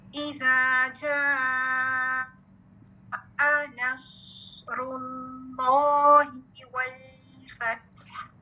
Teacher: جا تو آپ نے الجوف سے ادا کیا ہے، ٹھیک ہے، الف مد، لیکن حمزہ کے لیے آپ کو مخرج چینج کرنا ہے. حمزہ یہاں سرکل کریں، حمزہ الحلق سے.